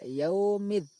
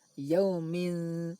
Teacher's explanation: suara tanwin dibaca ikhfa yaitu samar tidak dibaca izhar jelas yaumin juga tidak di idghamkan ke huruf